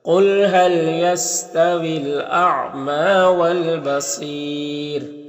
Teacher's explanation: اگر یہاں پر وقف کریں گے تو مد عارض وقفی ہوگا اور را کو باریک پڑھیں گے